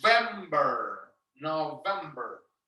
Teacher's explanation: when you're pronouncing November, that has the V, is your top teeth and your bottom lip